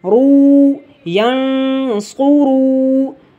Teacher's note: را کو بھی موٹا کر کے پڑھیں گے کیونکہ را کے اوپر پیش ہے